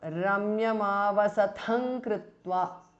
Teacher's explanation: avasatham ends in anuswara followed by ka so the anuswara changes to nga which is the anunasika of the kavarga